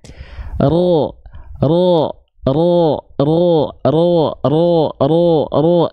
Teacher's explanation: karena pangkal lidahnya naik, tertransformasi dengan otomatis kalau tepat pangkal lidahnya naik, keluarnya jadi condong pada vokal O.